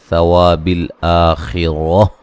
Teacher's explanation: خا کو موٹا ادا کریں گے، را کو موٹا ادا کریں گے